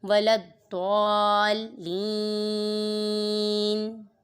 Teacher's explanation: وقف کی وجہ سے نون ساکن ہو گیا تو یہاں پر ہو رہا ہے مد عارض کہ ہم نے عارضی سکون لگا دیا، وقف کی وجہ سے نون کو ساکن کیا ہے، یہاں پر مد عارض ہوگا.